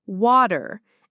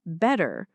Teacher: the American T turning into a soft D. Words like water sound like water, and better like better.